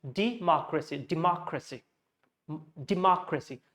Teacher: So the mock should come out very distinctly, very loudly. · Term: stressed portion